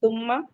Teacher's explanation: ثم میم مشدد ہے، غنہ کریں گے